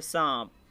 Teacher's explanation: نون گنہ، جس کی ادائیگی پورے طور پر ظاہر نہ ہوتی ہو، یعنی ادا تو کریں لیکن نون واضح اور کلیئر نہ ہو، بلکہ کسی قدر ناک میں گنگنی سی آواز نکلتی ہو